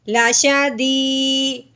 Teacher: یا ساکن سے پہلے زیر آ گئی، اس سے ایک الف کے برابر لمبا کریں گے